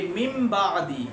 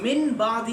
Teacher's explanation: ہم من بعدی نہیں پڑھتے، ہم مم بعدی، وہ چھوٹا سا میم لکھا ہوا ہوتا ہے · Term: اقلاب